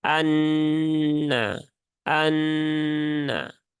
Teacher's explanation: nunnya kemudian diberikan tanda tasdid dan ini peleburannya sempurna maka ya sama seperti kita membaca Nun yang bertasdid Ya ditahan tiga harakat sempurnakan · atau lebih tepatnya lam syamsiah atau Idam Syamsi idgham syamsihingga ee lam takrifnya dia diidgamkan ke huruf nun sehingga nunnya kemudian diberikan tanda tasdid dan ini peleburannya sempurna